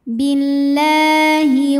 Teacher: Mad Thobi'i muqaddar karena ada huruf lam yang barisnya fathah panjang cara membunyikannya dipanjangkan lamnya dua harakat